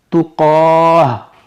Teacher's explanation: گول تا پہ کوئی بھی حرکت ہو, 2 زبر 2 زیر 2 پیش کچھ بھی ہو, اس کو اگر ہم رکیں گے تو اس کو ہا ساکنہ سے ہی بدلیں گے